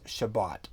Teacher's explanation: the Sephardic pronunciation, which has the hard t sound at the end of words